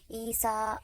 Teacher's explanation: یا لکھا ہوا پر بھی یا کی آواز نہیں نکل رہی ہے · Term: الف مقصورہ